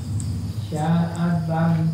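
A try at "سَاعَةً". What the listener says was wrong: Huruf depannya itu, Pak. Sa'atan.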